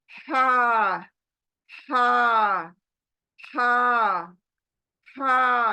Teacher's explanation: बीच में दबाओ और इसको अदा करो हा हा हा हा झरने की आवाज आएगी क्लियर आवाज नहीं आएगी